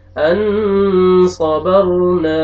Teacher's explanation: حمزہ زبر نون جزم ان, صا زبر صا ان صا, با زبر را جزم بر ان صبر, نون زبر الف نا ان صبرنا. اخفا نون ساکن کے بعد صاد آ رہے اور الف مدہ, الف سے پہلے زبر آ رہے, آپ نے کھینچنا ہے نون کو